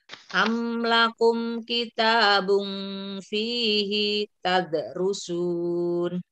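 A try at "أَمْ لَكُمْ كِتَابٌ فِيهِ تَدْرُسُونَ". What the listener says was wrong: ulangi hinya pendek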